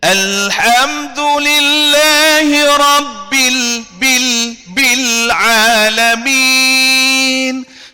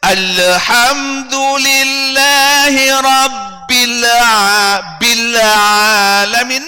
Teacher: Jadi saya ingatkan, lam cuma ada tawasud tetapi tidak ada qalqalah